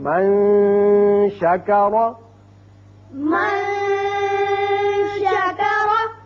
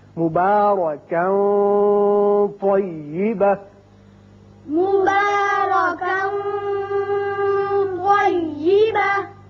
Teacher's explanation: آواز ناک کے بانسے سے ایک الف کے برابر ٹھہر کر نکلے گی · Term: اخفا